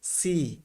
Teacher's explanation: ই আছে সেখানেই বুঝবেন যে এখানে একটা কি আছে টান আছে দীর্ঘ ইকারের মত একটা টান আছে